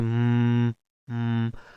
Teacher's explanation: our lips are actually our mouth is not actually opening but we are still producing sound how because the air is passing through our nose so we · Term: nasal stop